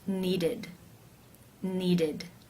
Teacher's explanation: Therefore, it is case 3, where the ED is pronounced as the I as in sit with the D sound.